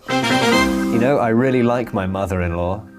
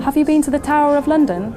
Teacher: this is called a linking R and it helps to make the words flow together more smoothly in natural speech